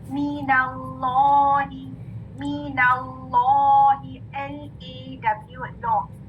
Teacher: उससे पहले वाले लेटर पे फतहा है, तो दोनों लाम मुफख्खम पढ़े जाएंगे। लेकिन कॉमन मिस्टेक क्या होती है कि एक लेटर बारीक कर देते हैं कुछ स्टूडेंट्स, ठीक है।